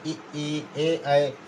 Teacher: वे स्वर जिनके उच्चारण में जिह्वा मुख के अग्र भाग में रहती है उन्हें अग्रस्वर कहते हैं।